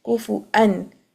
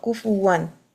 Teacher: Here, the special rule for Imam Hafs is that he has read this waw with the fathatain, kuf 1, and other Qurra have read this with the Hamza on it, kufu'an, but Imam Hafs has read it with the Waw, kufuwan.